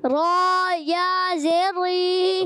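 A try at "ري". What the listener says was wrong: ری موٹا نہیں کریں. را پہلے جب پڑھیں گے را موٹا، را یا زیر ری اب باریک ہو جائے گا.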